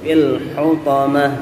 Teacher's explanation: Fil ditempel ujung lidah ke gusi depan atas, ya, supaya tidak mantul. Fil hutamah pakai ha.